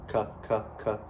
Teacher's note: posterior tongue is the cuh, so it's the very back of the tongue making that K sound